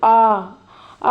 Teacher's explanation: पूरा विवृत मतलब पूरा मुंह खुल जाता है जैसे छोटे बच्चे को बोलते हैं ना डॉक्टर आ करो बेटा